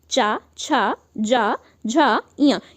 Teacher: ये आपके 5 वर्ण आते हैं और इनको हम लोग बोलते हैं तालु की सहायता से।